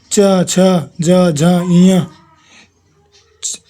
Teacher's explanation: दूसरा, तालु व्यंजन जिन वर्णों का उच्चारण करते समय जीभ का मध्य भाग हमारे तालु को स्पर्श करे तालु व्यंजन कहलाते हैं।